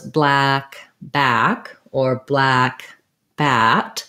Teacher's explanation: you can hear the ah is the same in both vowels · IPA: /æ/